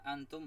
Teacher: Antum ikhfa nun mati ketemu fa bacaannya samar